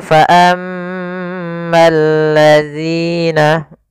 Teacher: Kemudian fa ammal ladzina, di sini ada alif lam, yaitu kita namakan dengan alif lam syamsiyah, yaitu alif lam yang ditulis tapi tidak dibaca, sehingga ini langsung ke huruf lam yang ketiga. Ya, al ketemu lam, maka bergabung menjadi lam yang ditasydidkan.